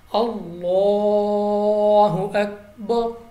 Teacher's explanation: لام آف اللہ سے پہلے حرف پر زبر ہے، تو ہم نے لام کو پر پڑھنا ہے